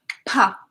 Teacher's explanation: the sound pushes out air. It's made with the lips.